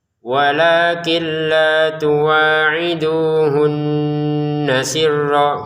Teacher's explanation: Hunna di sini kita dengungkan